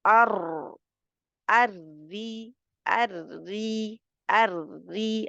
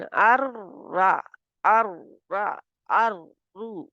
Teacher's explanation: अब मैं मोटा नहीं पढ़ रही रा को, क्योंकि ज़ेर से के साथ में पढ़ रही हूँ